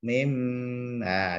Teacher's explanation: diganti suara mim karena bertemu dengan huruf ba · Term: iqlab